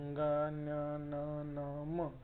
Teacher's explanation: जो वायू निघतो तो मुखातून आणि नासिकेतून म्हणजे नाकाद्वारे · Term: अनुनासिक